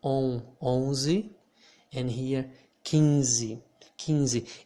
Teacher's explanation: So we do not pronounce the N. The N here in this situation makes the vowel that comes before of it become a nasal vowel.